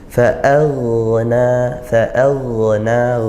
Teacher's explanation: ghain sukun dialirkan suaranya tanpa mengalirkan nafas atau desis, tidak perlu. Dan hati-hati karena ghain ini huruf tebal, kadang-kadang huruf sebelumnya ikut tebal, jangan ikut tebal juga.